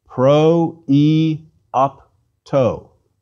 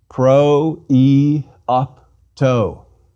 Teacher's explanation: the iota is pronounced separately from the preceding omicron rather than as the diphthong oi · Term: diarisis